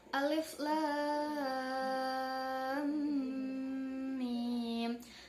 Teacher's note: panjangnya mad lazim Harfi mukhafaf itu adalah 6 harakat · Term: mad lazim harfi mukhaffaf